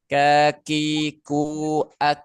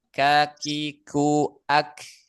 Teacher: huruf kaf makhraj yang kedua dari pangkal lidah itu agak ke depan sedikit